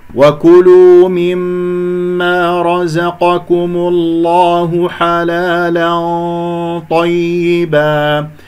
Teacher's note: تنوين مع الطاء إخفاء، غنة الإخفاء مفخمة بحسب مرتبة الطاء